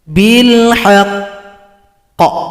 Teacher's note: Ingat rumus yang tadi, setiap qaf yang tasydid atau huruf qalqalah, cara berhentinya disukunkan, kemudian tunggu 2 ketukan baru dipantulkan.